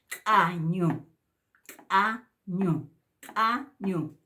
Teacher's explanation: con signo glotalizada se pronuncia con la glotis por eso decimos glotalizada